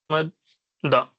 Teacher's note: اس میں ادغام کر کے ہم پڑھتے ہیں میم دال زبر مد، پھر دال زبر دا، مد دا، تو یہ تشدید کہلاتا ہے